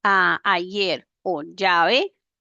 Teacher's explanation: La doble L y la Y se neutralizan por el yismo